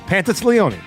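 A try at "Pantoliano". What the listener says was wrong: You're giving me an S. You're giving me an S there, too.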